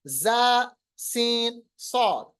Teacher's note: जुबान की नोक आपको नीचे के दांतों के साथ मिलाना है और दांतों के बीच में से आवाज सिटी की तरह निकालनी पड़ेगी। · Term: बड़े तेज हरूफ